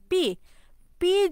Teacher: পি যখন উচ্চারণ করি তখন কিন্তু আমাদের দুই ঠোঁট কি একসাথে থাকে, তারপর কি ছড়ে যায় মানে আলাদা হয়ে যায়